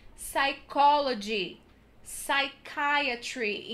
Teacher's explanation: Letter P, essas duas primeiras são super complicadas às vezes de entrar na cabeça de quem está estudando, porque em português a gente fala psicologia, tem o som do P. Em inglês é psychology, psychiatry. Então vocês nunca vão pronunciar esse P